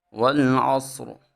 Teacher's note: جب ہم نے والعصری کے اوپر وقف کرنا ہے تو حالت وقف میں ہم اس را کو موٹا پڑھیں گے، کیونکہ یہ وقف کی حالت میں یہ را ساکن ہو جائے گی۔ تو جب را ساکن ہو اور اس کا ماقبل یعنی پیچھے والا لفظ بھی ساکن ہو اور اس کے ماقبل حرف کے اوپر زبر آ جائے تو را کو موٹا پڑھا جاتا ہے۔